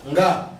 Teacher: N is the nasal and Ga has been prenasalized. It's the stop.